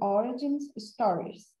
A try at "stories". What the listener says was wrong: So don't forget the S at the end.